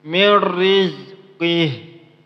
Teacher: Di sini nun ketemu dengan ro, maka nama hukumnya ialah idgham bila gunnah. Cara bacanya ialah jangan didengungkan. Kenapa? Idgham bila gunnah itu artinya ialah memasukkan tanpa dengung, berarti jangan didengungkan.